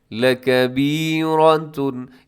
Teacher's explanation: کیونکہ ہا کے ساتھ الف ہے۔ وَإِنَّهَا لَكَبِيرَةٌ، لَكَبِيرَةٌ، اس میں را موٹی ہے کیونکہ را کی اوپر حرکت آ گئی ہے تو را موٹی پڑھی جائے گی